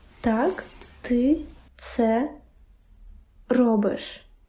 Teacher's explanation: Me, I hear a rolled R and I hear tag.